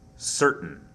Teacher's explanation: there's really not much of a sound between the T and the N